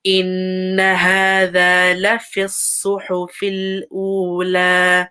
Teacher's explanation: So this noon has a shadda, so give it some time.